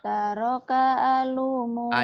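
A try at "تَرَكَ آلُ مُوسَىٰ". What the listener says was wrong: A-nya panjang. Kan berdiri tuh ada alisnya nih panjang. Ini panjang.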